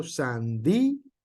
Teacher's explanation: Y aunque la palabra sandía también pareciera que tiene por ahí un diptongo, lo que es el acento que lleva en la I hace que se corte el sonido